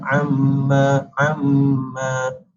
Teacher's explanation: huruf mim bersabdu menunjukkan kepada wajib al-gunnah dengan bacaan dengung 2 harakat, iaitu dengan bacaan amma, amma, dan seterusnya.